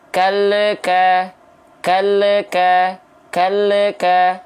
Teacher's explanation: Nah, ada tambahan bunyi le di sana, itu nggak boleh. Kenapa? Karena huruf lam tidak punya sifat qalqalah. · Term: memantul